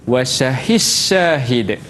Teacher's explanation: Kalau mutaqaribain, Wasyahis Syahid. Dal tu hilang. Masukkan ke dalam shin, jadi shin.